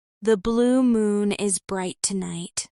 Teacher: blue uses rounded lips, moon stays rounded, and bright opens wide